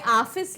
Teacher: इसका प्रयोग केवल अंग्रेजी के शब्दों में किया जाता है और आ और ओ के बीच की ध्वनि है। अब जैसे मैंने आपको पहले ही बताया, हम ऑफिस लिखें, ऑफिस लिखें, जो कुछ भी लिखें अगर हम, तो क्या होता है, ये चीज की मतलब आ, यहां पर आ और ओ के बीच का होता है। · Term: अर्धचंद्र